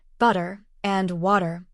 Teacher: the flap T sound, where the T in words like butter and water sounds more like a soft D